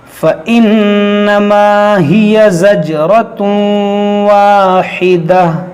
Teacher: تنوین کے بعد واو ہے, یہاں پر ہم ادغام کریں گے